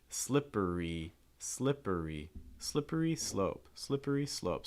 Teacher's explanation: it has a mix of the short I at the first syllable, slip, and then it has that long I, E, slippery, slippery, slippery slope, slippery slope.